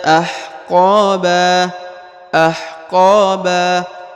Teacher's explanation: huruf qo dibaca panjang dua harakat karena di depannya terdapat Alif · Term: dibaca panjang 2 harokat